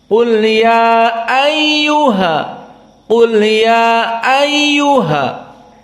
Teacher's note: Hada bi qasri al-mad. Dibaca 2 harokat saja.